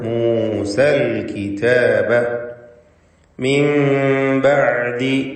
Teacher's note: സാക്കിനത്തായ നൂനിനെ ഇഖ്ലാബ് ചെയ്ത് മീമാക്കി മാറ്റി മണിച്ചുകൊണ്ട് ഉച്ചരിക്കുക